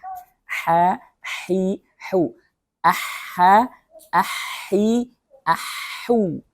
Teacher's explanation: Jadi bacanya harus dari tenggorokan tengah.